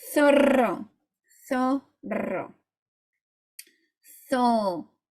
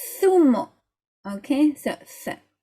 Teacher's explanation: The Z in Spanish is a th. So again, get your tongue out.